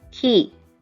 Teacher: when you say it it's much lighter and you have a air coming out of your mouth when you say it as opposed to and ku sound when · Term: aspirated sound